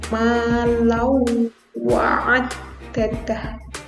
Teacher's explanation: Wawu itu termasuk huruf idgham bihunna. Jadi ketika ada tanwin ketemu dengan wawu, maka membacanya dengung.